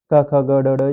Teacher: कंठ से बोलने वाले होते हैं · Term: कंठ्य